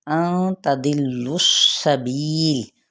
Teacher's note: ان تضلوا السبیل، تدلس، ضاد حروف متعالیہ میں سے لام کے ساتھ ملائیں گے، لام کے پیش سین کے ساتھ ملائیں گے، سین پہ سیٹی بھی واضح کرنی ہے اور اس حرکت کو لمبا نہیں کریں گے